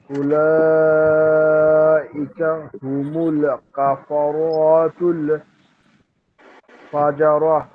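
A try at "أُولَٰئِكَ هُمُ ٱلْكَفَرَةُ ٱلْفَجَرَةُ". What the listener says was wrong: আর এই যে রাতুল টান হচ্ছে, একটু টানটুকু হবে না।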